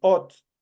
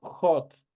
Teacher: es una H aspirada porque esa H se transforma en el momento de pronunciar como una J